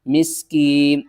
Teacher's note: سین کو ہم نے سیٹی کی آواز کے ساتھ پڑھنا ہے، میم کو سین سے ملانا ہے، میم سین زیر مس، کاف یا زیر کی، مسکین، نون زیرنی، مسکینی، اور وقف کی صورت میں نون کو ساکن کر دیں گے۔